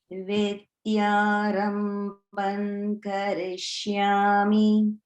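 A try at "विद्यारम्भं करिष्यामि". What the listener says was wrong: Notice the Mahaprana in Rambham. Rambham.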